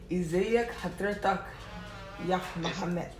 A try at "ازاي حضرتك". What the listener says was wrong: Okay, if I'm saying ازاي حضرتك, it would be ازاي حضرتك, not ازيك حضرتك. There is no two kaf. Only one kaf at the end of the حضرتك.